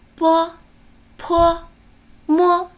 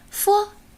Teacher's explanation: 波、坡、摸，它是一个双唇音；佛，它是一个唇齿音